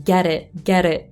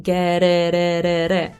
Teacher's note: è la R italiana, ma la lingua è spostata leggerissimamente più avanti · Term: flap T